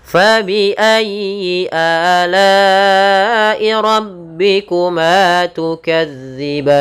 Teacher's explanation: ada bacaan mad arid sukun kita boleh manjangkan dua harakat empat harakat ataupun enam harakat